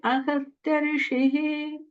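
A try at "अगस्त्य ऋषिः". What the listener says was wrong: the ga sounds a little more like a ha. So just focus on pronouncing this as ga. It's like a hard ga sound.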